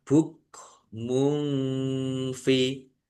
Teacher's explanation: Domah tanwin bertemu dengan huruf fa, bacaan ikhfa dibaca samar-samar.